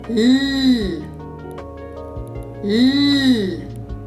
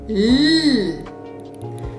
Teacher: the tip of my tongue is resting gently just behind my top teeth on the hard palate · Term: L sound